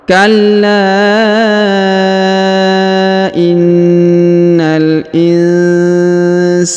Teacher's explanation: Perhatikan huruf la ditahan dan ditekan karena terdapat tanda tasdid. Setelah ditahan dan ditekan kemudian dipanjangkan 5 harokat ya, karena di atasnya terdapat tanda alif kecil.